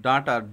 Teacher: ড টা হচ্ছে ঘোষ অল্প প্রাণ এখানে বেশি কাঁপে কিন্তু বাতাস কম বের হয়